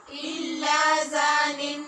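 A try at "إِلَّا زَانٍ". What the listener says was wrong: زان. آپ کا مخرج زا کا ٹھیک نہیں ہو رہا.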